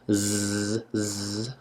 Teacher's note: z is the voiced sound z z i can feel that vibration